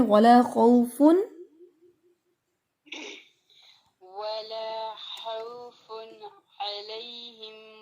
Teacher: ولا خوف علیہم، فن علیہم ایسے نہیں پڑھیں گے، فن علیہم یہ مجہول ہو جاتا ہے. تنوین میں نون ساکنہ کی آواز کو اسٹرانگلی پڑھنا ہے تاکہ وہ ہلے نہیں اور مجہول نہ ہو